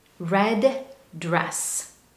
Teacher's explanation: we drop the d at the end of red and it links to the next word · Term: linking, dropped